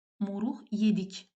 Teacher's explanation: moruqdan sonra samit gəldiyi üçün q burda x kimi tələffüz olunacaq